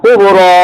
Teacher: Kubra 2 harakat saja. Jangan 4 harakat.